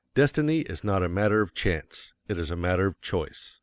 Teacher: Of course, you will want to emphasize destiny, for it is the principal idea in your declaration. And you will put some emphasis on not, else your hearers may think you are affirming that destiny is a matter of chance.